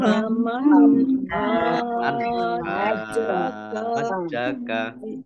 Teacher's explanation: Mat lazim musaqqal kilmi, yaitu mat tobi'i yang bertemu dengan huruf yang bertasdid. Hajjaka dibaca panjang dulu 6 harokat, baru masuk ke huruf berikutnya yang bertasdid, yaitu jim.